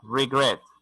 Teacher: El énfasis de sonido está en la segunda sílaba.